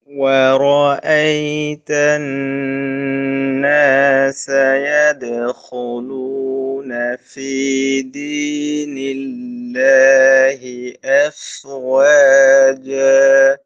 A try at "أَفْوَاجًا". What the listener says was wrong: এফ ধরে রাখবেন, একটু ধরে রাখেন, এফ ওয়াজা,